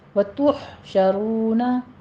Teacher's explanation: तुह में हा पर हमस करेंगे, वस्ते हलक से अदा करना है और इस पर भी कलकला नहीं करना